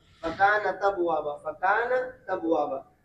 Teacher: حمزہ کا حرکت نقل کر کے ماقبل تا کو دے دیا اور حمزہ کو حذف کر دیا